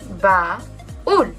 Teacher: tenemos una vocal abierta más una vocal cerrada y esta lleva el golpe de voz, es decir, es una vocal tónica, siempre se acentúa.